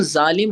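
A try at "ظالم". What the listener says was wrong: जालिम नहीं होता जालिम होता है ठीक है जेड आएगा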